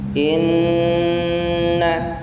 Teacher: Dia ada tasydid, maka bacanya inna. Inna ada gunnah di sana. Gunnah itu panjangnya sama dengan mad tabi'i.